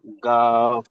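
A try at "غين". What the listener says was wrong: গাফ নয়, ওটা ওটা ওটা ওটা ওটার উচ্চারণ হবে গয়ন। গয়ন। এটা গাফ নয়। গাইন বললে, গাইন বললেও ভুল হবে, এর আওয়াজটা গোল হয়।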